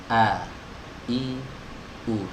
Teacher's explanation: huruf hamzah ini adalah huruf yang keluar dari pita suara. Ya, pita suara atau tenggorokan bagian bawah.